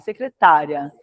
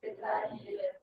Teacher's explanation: Secretária, ela é, vou falar de novo, ela é paroxítona. Termina com ditongo crescente porque o i vale meio e o a vale 1.